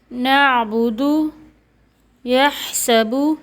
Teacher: یہاں نعبد میں عین اور یحسب میں حا، یعنی عین حا حلق کے درمیانی حصے سے ادا ہوئے ہیں۔